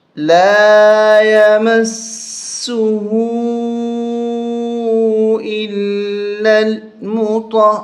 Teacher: را پیش رو، نون زبر نہ، لا یمسہ الا المطہرون، یہاں طا کو ہا کے ساتھ ملاتے ہوئے سختی کے ساتھ پڑھیں گے